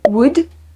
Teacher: I guess you don't say the L.